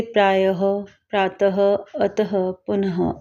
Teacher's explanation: विसर्ग या अयोगवाह किसी भी अक्षर के बाद लगाया जाता है, इसके आधे ह के समान उच्चारण होता है